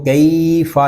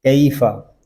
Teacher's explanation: حروف لین کو بغیر کھینچے بغیر جھٹکا دیے نرمی سے معروف پڑھتے ہیں